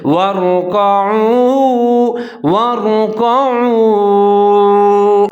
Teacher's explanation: ظاہر کر کے پڑھنا ہے، آگے واو کے اوپر ساکن ہے، عین پیش واؤ، ہونٹ گول کر کے پڑھیں گے